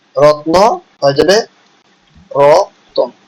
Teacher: উচ্চারণের সুবিধার জন্য সংযুক্ত ব্যঞ্জন ধ্বনির মাঝখানে স্বরধ্বনি আসছে, একে বলা হয় মধ্য স্বরাগম বা বিপ্রকর্ষ।